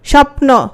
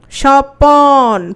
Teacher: পয়ের সাথে একটা অ আসছে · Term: মধ্যস্বরাগম